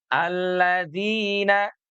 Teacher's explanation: alladzina jangan terlalu panjang, 2 harokat saja